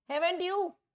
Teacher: टीचर क्या करेगी, tone rise करेगी अपनी। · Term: राइजिंग टोन